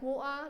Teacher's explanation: It's like drop the T, not too much, but like slightly.